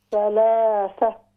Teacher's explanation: جو آخری ہا ہے اس کو اور زیادہ ظاہر کریں